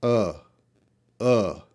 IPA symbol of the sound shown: ə